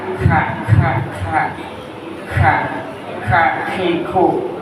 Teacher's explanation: ada hampas sedikit, Pak. Angin ada angin sedikit, Pak.